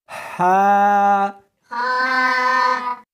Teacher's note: اس کو حلق میں سے نکالنا ہے اور ساتھ میں ہوا بھی ہونی چاہیے۔ ہا، ہا نہیں پڑھنی بلکہ اس کو حلق میں سے نکالنا ہے، سینے میں سے نہیں نکالنا۔